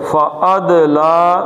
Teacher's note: دال ساکن ہوئی تو دال کا کلکلہ آ گیا